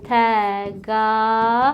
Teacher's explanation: Eyni zamanda burada A saiti uzandı. Sözün sonundakı D də T kimi tələffüz olundu.